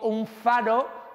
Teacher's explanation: Si digo un faro, ahora estoy haciendo una N labiodental, la F es labiodental, pues la N también es labiodental.